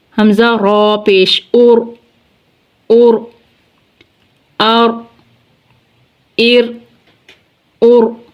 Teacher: را ساکن سے پہلے ضمہ آ گیا، را کو پر پڑھیں گے